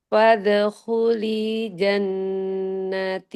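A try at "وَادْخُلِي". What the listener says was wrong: Wah, wadah kuli, bukan pada kuli. Telinya panjang. Telinya panjang bunyi.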